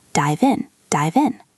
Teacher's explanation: The V in dive connects to the I in in.